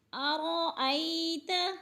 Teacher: ارأیت الذی، ارا کی را کو پر پڑھا جائے گا اس لیے کہ را کے اوپر زبر ہے اور اس سے پہلے لفظ کے اوپر بھی زبر ہے۔ ارأیت، ای کی یا کو لمبا نہیں کریں گے اس لیے کہ یہ لین ہے، یہ لین کو لمبا بھی نہیں کرتے اور جھٹکا بھی نہیں دیتے، آرام سے ادا کرتے ہیں۔